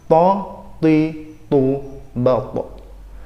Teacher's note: Cara pengucapannya dengan mempertemukan ujung lidah dengan langit-langit yang bagian depan. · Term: huruf to